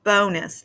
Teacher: It's the first syllable that is accented with that open O pattern.